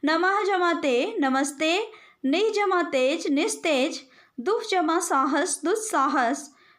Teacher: विसर्ग के बाद यदि त या थ हो तो विसर्ग का स हो जाता है